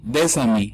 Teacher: liaison porque se conecta la S con la A